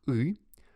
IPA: ɨ